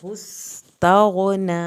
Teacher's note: सीन को सीटी की आवाज़ के साथ पढ़ें, गाइन को ना हिलाएं और नून की खड़ी ज़बर को खींचे।